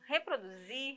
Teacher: a sílaba que sai com mais intensidade nós já vimos aí que é a última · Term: sílaba tônica